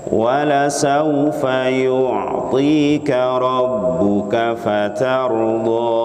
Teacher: Di sini la-nya harus pendek ya, karena sebagian orang membacanya dengan panjang